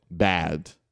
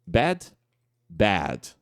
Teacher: a gente vai ter esse esse a mais aberto